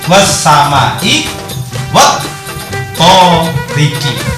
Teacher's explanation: Cuma karena setelah al berupa sida, maka al di sini nggak dibaca, sehingga langsung bacanya was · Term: samsiah